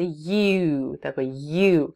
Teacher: как будто вы хотите сказать ye, но при этом губы немножко скругляете на u